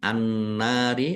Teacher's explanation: Nun tasdid dibaca ghunah atau mendengung. Nun fathah alif mad thobi'i panjang dua harakat.